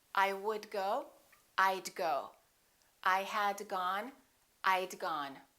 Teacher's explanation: let's practice contracting the word would I would sounds like I'd I would and I had sound exactly the same